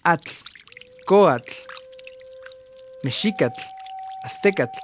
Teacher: La TL tiene un sonido de un chasquido corto, similar al de los dedos tocando el agua repetidas veces.